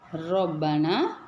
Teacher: ராவுக்கு ஃபத்ஹா இருக்கும்போது நம்ம தப்ஹீமா சொல்லணும் ர சொல்லக்கூடாது